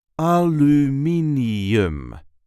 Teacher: There is a light emphasis on the third syllable. Aluminium. A l me n aluminum.